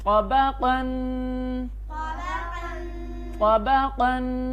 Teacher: تو تنوین پہ ناک پہ آواز میں چھپانی ہوتی ہے ناک کے اندر آواز چھپاتے ہیں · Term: غنہ